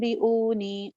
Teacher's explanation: بی اونی، ام ام بی اونی، ایک ہے ام بی اونی، ام ایک ہے بی اونی، بی اونی، ہلکے سے ہونٹ ملائیں. بی اونی، او واو مدہ، نی جائے مدہ، دونوں ایک ایک الف لمبے.